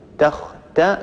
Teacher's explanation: تختصموا عندنا تاء مستفلة مفتوحة بعدها خاء مستعلية ، تختا ثم عندنا تاء حرف المستفل نرققه، تختا صي بعتالي